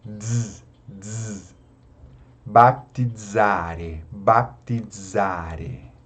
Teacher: E o Z tem o som de DZ.